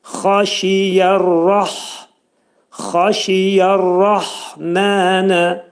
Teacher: xa boğazın yuxarısından çıxarılır.